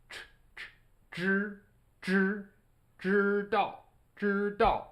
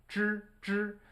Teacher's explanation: It's called a retroflex sound. And for the ZH, it sounds a little bit like a J in English, but with a totally different tongue position.